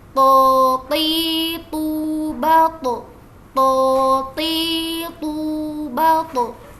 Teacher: Beda dengan ta dan juga da, huruf to ini dia huruf tafhim atau punya sifat tebal ya. Jadi ketika kita ucapkan maka kita angkat pangkal lidah kita